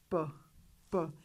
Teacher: The vocal cords don't vibrate, therefore p is a voiceless sound.